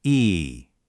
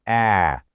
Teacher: That big movement, that's you changing the tongue height from close to open. So, that was the up and down.